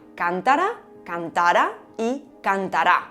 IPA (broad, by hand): 'kan.ta.ra kan.'ta.ra et kan.ta.'ra